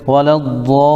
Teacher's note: یہاں پر کم از کم ہمیں 3 الف کے برابر مد کھینچنا ہے، جیسے ولا الضالین، لام کے اوپر بھی تھوڑا رکنا ہے چونکہ لام تشدید ہے اور تشدید والے حرف کو سختی کے ساتھ پڑھا جاتا ہے، جیسے غیر المغضوب علیہم ولا الضالین۔ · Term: مد لازم کلمی مثقل